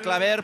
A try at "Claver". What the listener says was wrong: Víctor Claver. Con la R final, que se note la R.